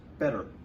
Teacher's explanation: How much attention does the two T's in the middle of better get? It's barely even pronounced. Better. Boom, right past the double consonant.